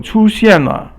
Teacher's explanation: 出 现 first tone and fourth tone, falling tone.